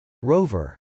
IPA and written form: rˈoʊvɚ (rover)